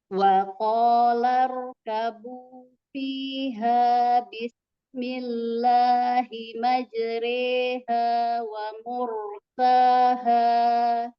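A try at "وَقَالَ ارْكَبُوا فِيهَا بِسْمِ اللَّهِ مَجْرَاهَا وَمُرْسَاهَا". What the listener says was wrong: Tadi sinnya nggak kedengeran tuh bunyinya. Nah, tadi coba kedengarnya Bismillah. Jadi nggak kedengeran ya. Kalau panjang dia S-nya hilang ya.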